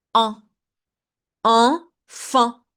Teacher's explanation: It's a nasal sound. Like when you say it, your nose vibrates.